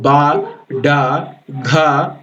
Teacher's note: అవుతాయి voice sounds కి వచ్చేటప్పటికి మనం పలుకుతున్నప్పుడు బ డ ఘ అని పలుకుతున్నప్పుడు మన వోకల్ కార్డ్స్ స్వరపేటిక అన్నమాట స్వరపేటిక వైబ్రేట్ అవుతూ ఉంటుంది అలా పలికే యొక్క సౌండ్స్ ని వాయిస్డ్ సౌండ్స్ అని అంటారు అన్నమాట వాయిస్